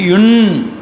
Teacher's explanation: 3 சுழி இன் வருகிற இடத்துல நாக்கை மடித்து இன் அப்படின்னு சொல்லணும்